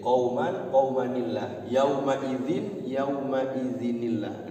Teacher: Ketika diwasal maka tanwinnya hilang, qauma jadi qaumani, qaumanillahu. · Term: Nun karena wasal